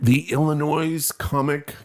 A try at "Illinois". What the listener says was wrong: You don't pronounce the S on the end.